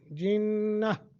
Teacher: وقف کی حالت میں نون تنوین کو ختم کر کے اور تا جو ہے اس کو بھی ختم کر دیں گے، صرف رہ جائے گا ہا، تو اسے ساکن کر کے پڑھیں گے، جنہ۔ جب وصل کریں گے، وصل یعنی ملا کے پڑھیں گے، تو پھر جنتم کر کے پڑھیں گے، نون تنوین کے بعد پھر قاعدہ لگا دیں گے یرملون کا، ٹھیک ہے جی۔